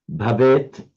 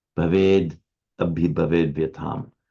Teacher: with sandhi, with the following vowel, bhaved, the t becomes a d